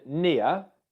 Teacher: the ear diphthong starts with the I sound in English, as in sit or it, and then goes into the schwa sound. Now, like with all diphthongs in English, the first sound in the diphthong is much louder, much more stressed, and lasts for much longer than the second syllable.